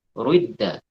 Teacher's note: Sehingga dicampur antara dhammah dan kasrah. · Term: ismam